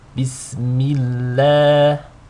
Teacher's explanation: In this case, we have a kasra on the meme. So the lam is read with a thin, in a thin and light way. Bismillah, with 2 counts. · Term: tarqiq